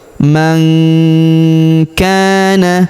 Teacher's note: huruf nun sukun bertemu huruf ka maka nun sukunnya melebur masuk ke huruf k. Kita baca dengung dan samar.